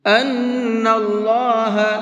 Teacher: نون کے اندر غنہ کریں گے اس لیے کہ نون کے اوپر تشدید ہے، اور اللہ کے لام کو منہ بھر کے پڑھیں گے کیونکہ اللہ کے لام سے پہلے زبر ہے، اور اللہ کے لام سے پہلے زبر ہوتا ہے تو اس اللہ کے لام کو پر کر کے پڑھتے ہیں۔ · ان اللہ، نون کے اندر غنہ کریں گے اس لیے کہ نون کے اوپر تشدید ہے، اور اللہ کے لام کو منہ بھر کے پڑھیں گے کیونکہ اللہ کے لام سے پہلے زبر ہے